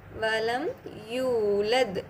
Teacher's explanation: தம்மா பக்கத்தில் வாவ் மத் இருக்குது. ஸோ 2 ஹரக்கத்.